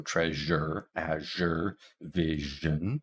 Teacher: Now we have a zh sound, which is just sh, but with vocal fold vibration. So treasure, azure, vision.